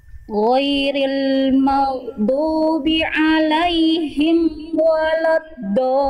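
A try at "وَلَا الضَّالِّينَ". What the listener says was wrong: Walad, jangan walad, bukan walad, wala, ya. Huruf wawu dan lam tipis.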